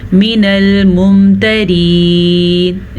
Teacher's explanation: را باریک پڑھیں گے، را کے نیچے زیر ہے۔